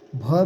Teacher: भ भी जो है कि ओष्ठ, लेकिन ये महाप्राण घोष वर्ण का है